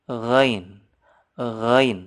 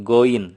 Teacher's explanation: Bukan seperti G dalam bahasa Indonesia. Karena kalau G itu tidak ada anginnya. Kalau ghain itu renyah, pecah.